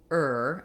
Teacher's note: this is not an uh and a it's one sound er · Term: root vocalic er sound